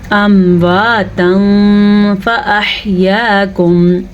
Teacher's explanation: ہم نے یہاں بھی نون تنوین کی آواز کو چھپا کے پڑھا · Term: اخفا